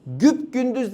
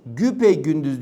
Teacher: Araya bir e girdi ya. Ünlü türemesidir.